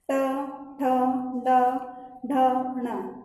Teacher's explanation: मतलब हमारी जिह्वा क्या है? उलट जाती है, उसके बाद में सीधी होती है। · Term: मूर्धा